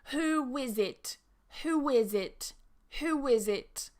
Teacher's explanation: And you can see we add that w to the beginning of is, whiz, who is it? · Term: connecting sound